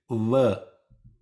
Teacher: you use the upper teeth to hold the lower lip and release the lower lip as you pronounce it